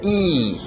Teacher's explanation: Termina com a minha língua prensado no céu da boca.